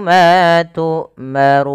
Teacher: Ma Tarun kemudianadafal Run orangnya dibaca dengan ro tafkhim tebal kemudian dipanjangkan boleh dua harakat boleh empat harakat dan boleh pula enam harakat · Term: Mad